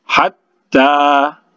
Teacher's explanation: Kemudian hatta itu dua harakat karena itu mad tabi'i alif ya, pengganti alif situ, hatta dua harakat. Kemudian tanya itu bertasydid, ditahan ya, ditahan sedikit